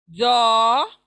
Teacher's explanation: ज़ जो जुबान बाहर आएगी सामने के दांतों को लगेगा